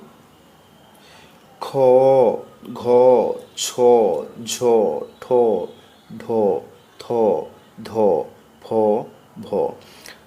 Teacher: ঝ ঠ ঢ থ ধ ফ বর্গের দ্বিতীয় ও চতুর্থ বর্ণ এদের উচ্চারণে অধিক প্রাণবায়ুর প্রয়োজন হয় তাই এদের মহাপ্রাণ বর্ণ বলা হয়